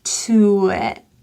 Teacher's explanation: It links to the word it. This I is that low relaxed vowel, so don't say eat, but pull your tongue down.